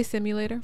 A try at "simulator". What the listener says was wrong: Did you realize that wherever there's U's in words, you say A's?